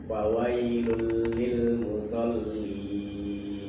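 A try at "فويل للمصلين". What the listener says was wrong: Tebalkan lagi stopnya. Tebal ya, tebal.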